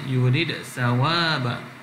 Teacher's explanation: dia tak masukkan dal kepada sa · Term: izhar